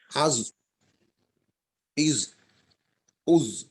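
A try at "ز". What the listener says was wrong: হ্যাঁ মেহেদুল ভাই, এই আমার কাছে যেটা মনে হইতেছে যে জয়ে বোধহয় একটু বাতাস বের হয়, বাতাসটা যেন নিয়মিত আউ ইউ উ আওয়াজ চালু রাখবো কিন্তু বাতাস চালু রাখবো না। হ্যাঁ, জিহ্বার আগা সামনের উপরের দুই দাঁতের আগার সাথে লাগবে, এটা মাখরাজ।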